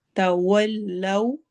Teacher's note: होगी। फ़इन तवल्लौ, फ़इन में नून की आवाज को छुपाएंगे, तवल्लौ वाव में होंठ गोल होंगे हमारे प्रॉपर